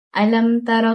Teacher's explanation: Untuk ayat pertama surah al-fil terdapat izhar syafawi pada mim mati bertemu huruf ta. Ia dibaca dengan menjelaskan sebutan mim sukun tanpa dengung.